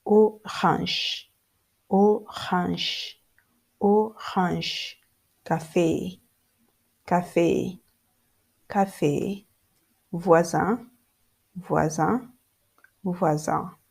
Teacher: In French, it is the last part of the word that bears the heavy stress.